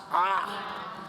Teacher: 아 소리는 입을 가장 크게 벌릴 때 아 소리가 나는 거죠